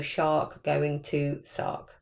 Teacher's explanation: So from that post-alveolar to the alveolar position, so the sh going to a s, for example. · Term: palatal fronting